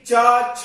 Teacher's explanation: ये मेरे नाखून देख रहे हैं, इनको आप समझें दांत और इसको समझें जीभ। तो जब ये जीभ चा छा बोलेगी तो दांतों के ठीक पीछे लगेगी